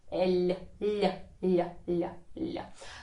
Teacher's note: You put the tip of your tongue down, you raise the middle of your tongue up. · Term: soft sound